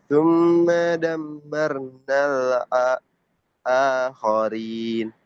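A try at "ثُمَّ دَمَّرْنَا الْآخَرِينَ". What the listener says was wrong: Enam ghunahnya masih kurang dengung jadi dinikmati aja agak pelan,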